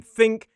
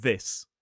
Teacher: the voiceless th in think and the voiced th in this.